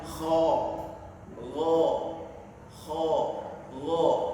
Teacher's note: huruf yang ada di ujung tenggorokan ini tergolong dalam huruf yang dibaca tebal, kho sama go ini. Jadi cara mengucapkannya adalah dengan membuka mulut kita, jadi tidak lebar ya, cuma membuka mulut kita sampai kita membukanya itu sedang, tapi harus dibuka agak lebar.